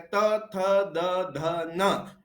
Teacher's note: त, थ, द, ध, न तो हमारी जीभ जो है वो हमारे दांतों के पीछे टकराती है। इसलिए इनको दंत वर्ण कहते हैं। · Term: दंत्य वर्ण